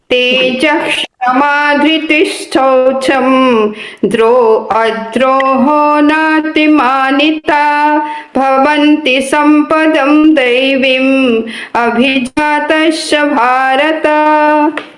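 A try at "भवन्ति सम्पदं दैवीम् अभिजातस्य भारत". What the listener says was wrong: ठीक है, दैवी, दैवी पे ज्यादा रुकना है। दैवी अभिजातस्य।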